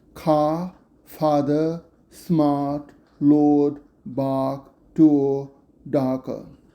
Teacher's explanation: This dialect maintains a non-rhoticity, just like in New York accent.